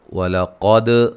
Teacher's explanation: قاف کو موٹا، دال پہ قلقلہ